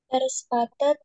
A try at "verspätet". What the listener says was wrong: Ini hati-hati, itu A umlaut. Bacanya gimana?